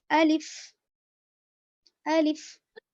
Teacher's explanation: منہ کی اندر کی خالی جگہ سے ہوا کے ساتھ نکلتا ہے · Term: الف کا مخرج